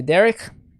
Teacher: the accent is on the first one the first uh syllable with derrick